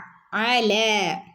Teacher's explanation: തൊണ്ടയുടെ നടുക്ക് നിന്ന് വരുന്ന അക്ഷരമാണ് അ